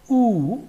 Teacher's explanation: while producing oo, lips position or the lips shape is round. That's why it is called rounded.